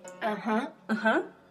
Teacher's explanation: The third tone has a V shape over the vowel, and it starts low, then goes even lower before it rises to the high tone. For example, in English, when you say yes in spoken English, you will say uh-huh.